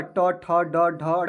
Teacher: ट वर्ग का जो उच्चारण स्थान होता है वह क्या होता है, तो मूर्धा होता है